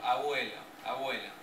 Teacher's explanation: Entre vocales se da por ejemplo, abuelo, abuelo. Se da el sonido fricativo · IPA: [ β ]